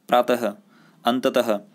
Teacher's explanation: अ जो होता है को विसर्ग कहा जाता है। इसमें देखा होगा आपने पीछे ह जैसी आवाज़ साउंड सुनाई देती है हमें, ठीक है। जैसे उदाहरण देखें अतः, तो यहाँ पे ऐसा लग रहा है लास्ट में ह आ रहा है।